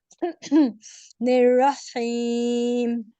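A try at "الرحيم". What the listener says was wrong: निर्रहीम, बहुत से ज़्यादा हीम, वो खा की तरफ नहीं लेके जाना, का आपको पता है ना कि उसका घर बदलेंगे तो खा है नेबर उसका। हाँ जी, जे अगर ज़्यादा कर देंगे ना,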